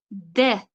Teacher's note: Til va tepa tishning o'rtasidan portlab chiqyapti. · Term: portlovchi undosh